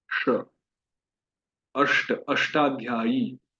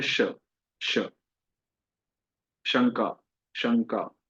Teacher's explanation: तो ये श जो है मूर्धा पे स्पर्श होगा।